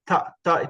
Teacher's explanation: you notice that your tongue is touching the teeth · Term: Dantya